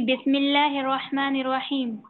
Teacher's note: बिस्मिल्लाह में जो लफ्ज अल्लाह है वो भी बारीक पढ़ा जाता है, क्योंकि बिस्मिल्लाह मीम के नीचे जेर आया है।